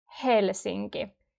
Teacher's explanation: We always pronounce the H. Like when you're breathing out, it's that sound. Helsinki. Not so strong, but still you can hear it.